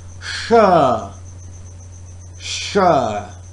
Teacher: Now, try to feel air is forced to the tongue and point just beyond alveolar ridge